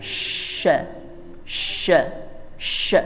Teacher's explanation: Kalau yang sya itu terdengarnya seperti tafkhim, tebal, atau isti'la. Sya. Jadi seperti ada o-nya.